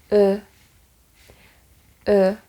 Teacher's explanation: So front of the tongue is raised, like touching your lower teeth, but going up a little bit.